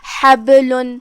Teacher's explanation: با پہ جزم ہے تو ہم با کو ہلاتے ہوئے یہ کلمہ کو ادا کریں گے، کیونکہ یہاں حکم ہوا قلقلہ۔